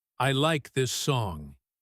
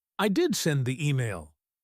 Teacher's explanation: By stressing the word do, you are punching the sentence with your fist. You are saying, "Do not doubt me. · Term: emphatic auxiliary verb